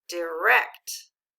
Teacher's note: the accent we see is on the second syllable